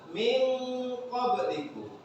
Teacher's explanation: nun mati atau tanwin bertemu dengan salah satu huruf ikhfa, nanti nun mati atau tanwinnya disamarkan